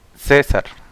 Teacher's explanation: la mayor fuerza de voz es en la penúltima sílaba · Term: palabras graves o llanas